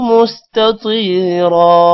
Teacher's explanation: یہاں پر پہلے تا ہے پھر تو ہے، دونوں میں آپ نے فرق رکھنا ہے، تو کو موٹا کرنا ہے، تا کو موٹا نہیں کرنا